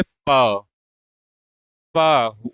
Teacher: जिसका उच्चारण दोनों होठों से होता है या दोनों होठों के मेल से होता है उसे हम कहते हैं ओष्ठ व्यंजन